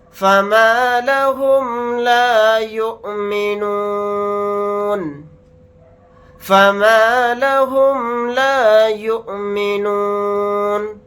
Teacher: حمزہ ساکن پر جھٹکا لگا کر پڑھیں گے, نون کو ساکن بنا کر پڑھیں گے حالت وقف میں.